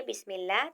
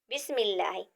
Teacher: جب ہم پڑھتے ہیں بسم اللہ تو اس میں اللہ کا لام موٹا نہیں پڑھا جائے گا، کیونکہ اس سے پہلے حرف میم ہے اور اس پر زیر ہے۔ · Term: باریک